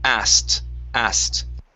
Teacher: Okay, so in this word, we're going to drop the K, and we pronounce a T sound only